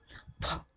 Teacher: It is produced with help of 2 lips, upper lip and lower lip. So we call this sound as bilabial sound.